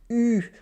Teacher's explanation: the tongue is high and close to the front of the mouth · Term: pure vowels